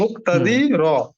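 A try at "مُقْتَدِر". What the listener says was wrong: মুকতাদির, আপনার হরকতের উচ্চারণ টান ছাড়া দ্রুত পড়তে হয়। আবার যখন মিলিয়ে পড়ছেন তখন আপনার টানের টোন চলে আসছে।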